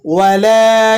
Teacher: لام الف زبر لا ہے تو آپ نے اسے ایک الف تک کھینچ لینا ہے